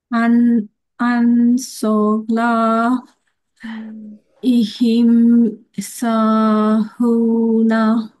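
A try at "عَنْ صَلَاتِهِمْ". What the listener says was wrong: এটা ইয়া না, এটা হচ্ছে তা। এখন এই আনের এই অনেশ্বরের উচ্চারণটা আমি পাই নাই, ভালো করে পাই নাই। এই দেখেন, আমি পড়ি। আন সলাতিহিম, বলেন। আন সলাতিহিম।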